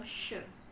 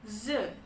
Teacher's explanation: Kalau yang sh itu voiceless, kalau yang z itu voiced.